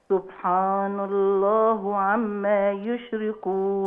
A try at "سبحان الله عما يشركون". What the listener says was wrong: لا سبحان الله هي. قوليها تاني بس اكسري الهاء. سبحان الله.